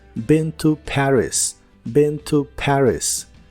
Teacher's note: La doble E de been se pronuncia como una I corta y la A de la palabra Paris es una combinación del sonido E y el sonido A.